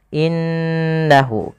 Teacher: ghunah yaitu memasukkan suara ke rongga hidung dan ditahan